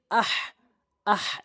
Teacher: সঠিক উচ্চারণ হচ্ছে হলকের মাঝখান থেকে হা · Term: বড় হা